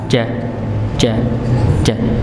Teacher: Maka benar kalau kita pas baca ja-nya enggak nyembur udaranya